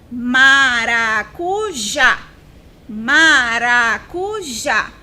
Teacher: o som mais forte é o já